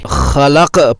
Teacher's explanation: قلقلہ میں کی جانے والی عام غلطیاں: حروف قلقلہ یعنی قطب جد کے 5 حروف ساکن ہونے کے باوجود بغیر قلقلہ، بغیر ارتعاش اور گونج کے پڑھے جائیں تو یہ غلطی ہوگی۔ جیسے من شر ما خلق میں قاف پر عارضی سکون اسے ساکن کر دے گا، اسے قلقلہ کرتے ہوئے خلق پڑھنا ہے۔ اگر اسے خلق پڑھیں تو یہ قلقلہ نہیں ہوا، جو کہ غلط ہے۔